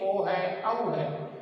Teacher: कंठ और ओष्ठ यानी होठों से इसकी आवाज निकलती हुई बाहर आती है, तो इसलिए इसका उच्चारण स्थान क्या हो गया, कंठोष्ठ हो गया।